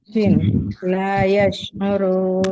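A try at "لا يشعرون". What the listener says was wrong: Nah, lebih sifat tafasyinya dikeluarkan. La yash'urun. Jadi shinnya lebih menyebar. Nah, lebih menyebar lagi udaranya.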